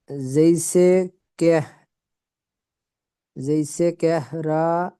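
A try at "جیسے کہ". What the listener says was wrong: কেহ না, জैसे কে। কে হাটা পরিপূর্ণ উচ্চারণ হবে না, জैसे কে।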